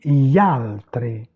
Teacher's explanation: on ne prononce pas le I.